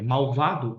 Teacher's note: o L tem som de U